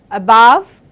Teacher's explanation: it's a schwa, it's second part of the word which is stressed.